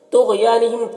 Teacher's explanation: تا اور غین دونوں حروف مستعلیہ میں سے پر پڑھیں گے، اور یا مدہ ہے یہاں پر، میم میں اظہار شفوی ہو رہا ہے۔